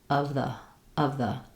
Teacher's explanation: So two schwas and a v and a th /ð/ in the middle.